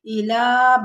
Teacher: لام کے اوپر کھڑا زبر ہے، تھوڑا سا کھینچیں گے